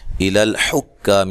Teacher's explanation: بہا الل یہاں مد جائز ہے. الى الحکام حا کو صحیح ادا کرنا ہے، کاف کو باریک پڑھنا ہے، الف مدہ ہے